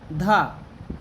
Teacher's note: हिंदी की स्पर्श, घोष, महाप्राण, दंत, व्यंजन ध्वनि है